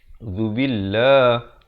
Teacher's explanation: lafz jalalah dibaca nipis.